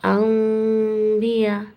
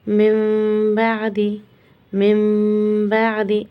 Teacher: ہمیں آدھا میم ادا کرنا ہے